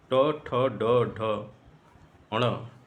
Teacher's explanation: कठोर तालव्य से भी नीचे का जो स्थान है, जिसको मूर्धा कहा जाता है, उससे ये ध्वनियाँ उत्पन्न होती हैं, इसलिए ये मूर्धन्य की श्रेणी में आती हैं